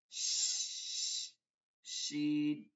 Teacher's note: জিহ্বা আর তালুর মাঝখান থেকে বাতাস চলে আসবে